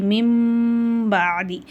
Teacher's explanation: சுக்குூன் பெற்ற நூனுக்கு அப்புறம் பா வருது இங்க இலாபுடைய சட்டம் வருது அப்ப அந்த நூனுடைய சப்தத்தை நம்ம மீமா மாத்தி குண்ணா செஞ்சு ஓதணும்